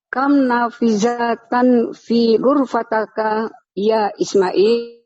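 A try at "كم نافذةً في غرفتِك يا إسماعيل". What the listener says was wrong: Fi ghurfatika. Fi ghurfatika, bukan ghurfataka.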